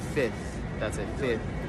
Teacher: that second F you just want to skip that